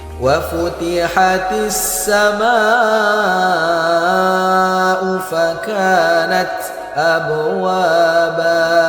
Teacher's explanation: Huruf ta ketika berharokat sukun, maka harus kedengaran desisnya. Desis itu maknanya ada udara yang mengalir, karena huruf ta ini punya sifat yang namanya hamas.